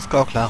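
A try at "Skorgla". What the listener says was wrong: Skorklar? Es klang wie Skorkra oder so. Oder vor allem kannst du wie ein K, Skorklar.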